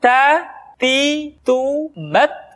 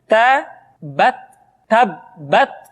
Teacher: huruf Ta ketika diucapkan, terdengar ada nafas yang mengalir. Atau dalam ilmu tajwid disebut dengan sifat al-hamas.